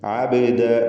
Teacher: ബാഇൻ്റെ സുക്കൂൻ ഖൽഖല സുഗ്റ നൽകി ശബ്ദം ഹറക്കത്ത് പോലെ ചലിപ്പിക്കുക.